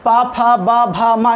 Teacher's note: इनका उच्चारण स्थान ओष्ठ है ना। बगैर ओष्ठ के आप इसका उच्चारण नहीं कर सकते हैं। बगैर होठ मिलाए उच्चारण करके दिखाइए भला, पा नहीं कर सकते हैं। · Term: पवर्ग